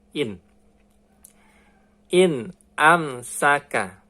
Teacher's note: Ini non mati bertemu dengan huruf alif hamzah. Jadi bacanya izhar teman-teman ya. Jadi harus jelas.